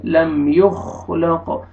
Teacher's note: خا کو موٹا کر کے پڑھیں گے قاف پہ ڈبل ساؤنڈ آئے گا حروف قلقلہ میں سے ہے